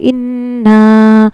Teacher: غنہ کہتے ہیں ناک میں تھوڑی دیر آواز کو روکنا۔ نون پر ہمیں غنہ کرنا ہے، تھوڑی دیر ناک میں آواز کو روکنا ہے۔